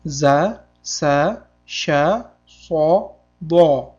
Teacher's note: oxirgi ikkita harfda ustida fatha kelganda a emas, fatha o tovushini berar ekan. Demak, so hamda do deb o'qisak to'g'ri bo'ladi.